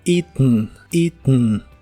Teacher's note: algunos incluso la pronuncian de manera nazal al final y suena como eaten eaten ambas pronunciaciones eaten o eaten son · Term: nasal